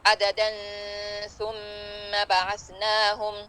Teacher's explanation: اگر ہم ملا کے پڑھ رہے ہیں عددا ثم بعثناہم، تنوین کے بعد سا، پھر اخفا ہوئے گا، یہاں غنہ آ جائے گا، مگر آئے پہ ٹھہرنا سنت ہے.